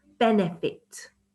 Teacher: So you can see that I'm stressing the first syllable, benefit. Okay, and then it gets less stressed.